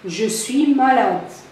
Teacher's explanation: Le ton de la phrase déclarative, qui est la première phrase, c'est un ton qui est horizontal, c'est-à-dire l'intonation, ou bien le ton, il est neutre. C'est un ton neutre.